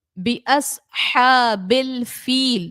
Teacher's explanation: با پہ تشدید ہے، حروف کلکلہ کا ہے، با کو جماؤں کے ساتھ ادا کریں گے · صاد کو حروف مستعلیہ ہے تو اس کو موٹا پڑھیں گے